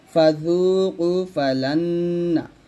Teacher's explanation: লাম গিয়ে নুনকে ধরবে এবং গুণ্য হবে, এটাই তোমার বাগণ্য হবে।